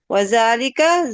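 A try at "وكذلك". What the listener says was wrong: Wazaka. Nggak pakai lam. Wazaka.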